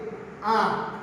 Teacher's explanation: अ से थोड़ा सा ज्यादा समय हमें किसके उच्चारण में लग रहा है? आ के उच्चारण में लग रहा है। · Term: दीर्घ